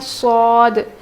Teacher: زبان کی نوک نیچے کے دانت میں لگا کر پڑھتے ہیں